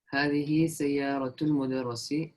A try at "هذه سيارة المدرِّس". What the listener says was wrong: Mudarrisi, not mudarras. Mudarras is you are mudarras and I am mudarris. So the one who's teaching is called mudarris, and the one who's being taught is called mudarras. So there is a difference.